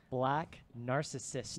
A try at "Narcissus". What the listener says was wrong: Narcissus. Not Narcissist. Narcissus.